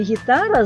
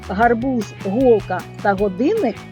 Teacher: в слові гітара звук г м'який а в словах гарбуз голка та годинник тверді